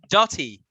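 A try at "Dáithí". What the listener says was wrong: No, not Dahi. Dahi. As in Dahi. Dahi. Yeah, the T is silent.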